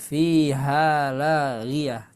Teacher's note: ketika tamar butoh di ujung bacaan, di akhir bacaan, maka dia berubah menjadi huruf H ya